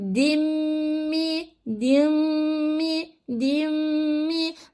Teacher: harfine bağlayarak geçireceğim Mim harfine tutturarak geçireceğim nasıl yapacağım bakıyorum nun nun sesini Mim harfine bağla tuttur diyoruz ya idgam yapacağız katacağız